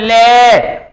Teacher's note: जुबान के साइड के हिस्से यानी बराबर वाले हिस्से ऐसे लगते हैं जैसे जीभ के बराबर वाले हिस्से से हवा निकल रही हो, तो इसलिए उसे पार्श्विक यानी जीभ के पास से हवा निकल रही है, इसलिए उसे पार्श्विक व्यंजन।